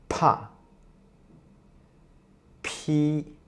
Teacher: P is an aspirated consonant, and P is non-voiced as well. So when you pronounce the P, you can feel a puff of air coming out of your mouth.